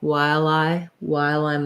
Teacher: i'm going to link that um l sound · Otherwise, I'm going to say I'm every time. So when I go from while to I, while I'm at it, I'm going to link that L sound. So this I is the diphthong I.